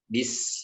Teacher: Diucapkan dengan merapatkan kedua bibir ya. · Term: huruf ba